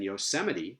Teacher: third to last stress, as in Yosemite